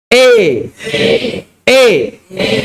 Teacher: memiringkan suara fathah ke arah kasrah dan alif ke arah ya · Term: imalah